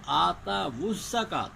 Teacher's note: یہ واو لین ہے، اور آگے الزکاۃ کی پہلی زا بھی ساکن ہے، اس میں واو کو جو ہے نا وہ ضمہ دے کے پڑھیں گے